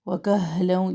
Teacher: اقصے حلق سے ہا کی آواز نکلتی ہے